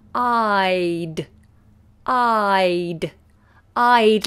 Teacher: the tongue makes a big movement from below, back of the tongue comes high, and then the front of the tongue for the D. I'd. I'd.